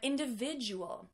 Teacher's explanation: Do you hear how the D and the U actually blend together to make this J sound?